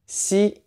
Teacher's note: the X sound, which is a mix between S and SH in English, but again, clench your mouth, tongue forward, it's a tighter sound.